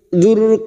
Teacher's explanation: ro sukun yang didahului dumah kita baca tafkim